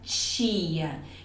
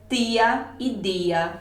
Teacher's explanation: Então, para você que quer neutralizar o sotaque, escolha utilizar os sons africados. Nós chamamos esses sons de africados, quando eu junto o T com o som do CH ou o D com o som do J